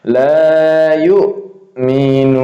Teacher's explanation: Nah, ini hamzahnya dia syiddah ya. Laju nafas tertahan.